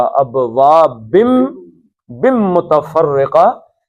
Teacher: نون تنوین کے بعد میم آئی ہے تو نون نہیں پڑھا جائے گا، میم پڑھا جائے گا